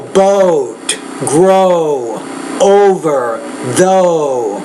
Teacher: you need to make that Oh longer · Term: longer vowel sound